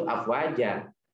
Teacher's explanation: Jadi domat fathatainnya jadi didengungkan karena di depannya ada huruf fa. Tapi kalau diberhentikan di situ afwaja, jangan dibaca tanwin, jangan dibaca fathatain. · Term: mad iwad